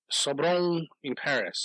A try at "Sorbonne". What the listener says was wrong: There's no R. Not Sorbonne.